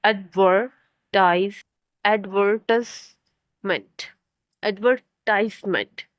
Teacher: advertisement is often stressed on the third syllable in British English